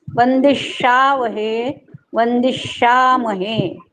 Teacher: शा दीर्घ म्हणायचा आणि आघात देऊन म्हणायचा त्याच्यावर, म्हणजे मग त्याचा उच्चार स्पष्ट येतो.